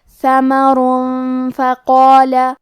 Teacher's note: کلمت فقال، فا حروف الاخفاء میں سے ہے اور اخفاء کا معنی ہے چھپا دینا تو ہم یہ تنوین کو چھپاتے ہوئے اور غنہ کے ساتھ یہ حکم کو ادا کریں گے · کلمت فقال میں قاف کی ادائیگی زبان کے جڑ اور تالوں کے نرم حصے سے ہے۔